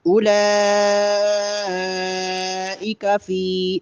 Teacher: اولا پہ جو بڑی مد ہے اس کو کم از کم 5 الف کے برابر لمبا کریں گے۔ اولئک فی، فا یا مدہ ہے، اس کو بھی 1 الف کے برابر، فی صرف فی جن کریں گے غلط ہو جائے گا، تھوڑا لمبا کریں گے۔